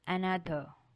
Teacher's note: the stress is in the second syllable. Second syllable lana with a stress.